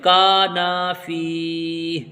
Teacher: کا اور نا دونوں کے ساتھ الف مد آیا ہے، اس لیے دونوں کو ہم کھینچ کر کے پڑھیں گے